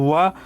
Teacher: अब बच गया है व, तो व का जो उच्चारण आप व उच्चारण करके लिए देख सकते हो। व का उच्चारण दंत और ओष्ठ से होता है, इसीलिए इसको नाम दिया गया है दंतोष्ठ।